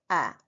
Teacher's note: जब हम आ बोलते हैं तब हमारे ओठ गोलाकार नहीं होते हैं। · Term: अवृत्तमुखी स्वर, अवृतमुखी स्वर